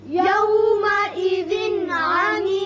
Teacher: یومئذ تنوین کے بعد عین ہے، یہاں اظہار حلقی ہوگا